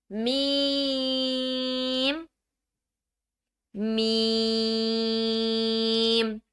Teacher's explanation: دونوں ہونٹوں کو آپس میں ملا کر میم کو ادا کیا جائے گا۔